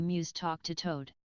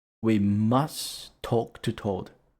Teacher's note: you don't have to pronounce the T at the end of must